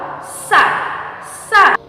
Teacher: untuk sa dilapaskan dengan ujung lidah dipertemukan dengan gigi seri bagian bawah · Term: huruf sa